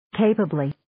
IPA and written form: 'keipəbli (Capably)